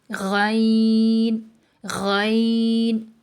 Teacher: ادنی حلق سے منہ کی طرف والے جو حصہ ہے وہاں سے خ اور غین ادا ہوتے ہیں